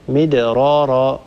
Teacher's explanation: هذه الراء لا ترقق لتتالي راء بعدها مدرارا، ولا نرقق هذه الراء لأن عندنا راء وبعدها راء ثانية.